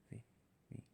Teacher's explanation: So V is like an F, but voiced.